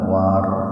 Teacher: War itu tafhim ya. Ro-nya dibaca tebal